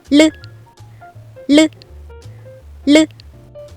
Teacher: 혀를 더 구부려서 혀끝이 안으로 더 들어가 입천장 쪽에 붙은 상태로 준비를 하고 있다가 입 안을 올리면서 혀를 떨어뜨며 말해요.